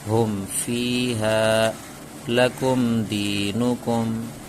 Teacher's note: تو قاعدہ اس طرح بولنا ہے، آسانی کے لیے یاد کرنا ہے، میم ساکن کے بعد با اور میم کے علاوہ کوئی اور حرف آئے تو اظہار شفوی ہوگا، اور اظہار شفوی کو گننا کے بغیر پڑھیں گے، جیسے ہم فیہا لکم دینکم، یہاں میں دیکھیے میم ساکن کے بعد فا آیا، جو میم ساکن کے بعد با بھی نہیں ہے میم بھی نہیں ہے، اسی لیے گننا بھی نہیں ہوگا۔